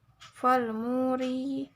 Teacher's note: huruf ro ini dibacanya tarkik yaitu tipis saja bacanya